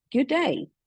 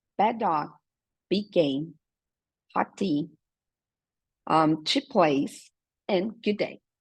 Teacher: esse último D aí do good, que realmente não precisa quase ser pronunciado, ele é super curto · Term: linking sound